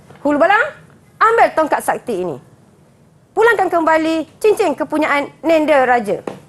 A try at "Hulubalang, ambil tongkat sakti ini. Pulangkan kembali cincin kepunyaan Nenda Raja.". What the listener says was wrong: Kalau boleh, dialog tu tinggi sikit, cikgu. Marah kan?